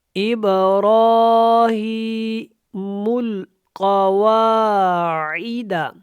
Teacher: را اور اس ہا کو ہم نے لمبا کرنا ہے کیونکہ اس کے اوپر کھڑی زبر ہے اور اس کے نیچے کھڑی زیر ہے۔ · قاف جو ہے یہاں پہ موٹا ہے کیونکہ قاف حروف مستعلیہ میں سے ہے